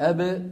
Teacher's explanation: طبعا الباء من فين يا شباب؟ من الشفتين